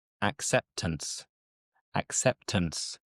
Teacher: So we don't boldly pronounce the T. It's again just a faint T.